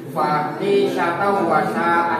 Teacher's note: Idgham biguna, masuk dengan dengung